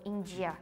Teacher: the D sound when it's fusioned with I or E it's going to sound like J so India there are some